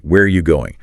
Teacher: The stress is on where and going and that word are just becomes tiny >> almost disappears.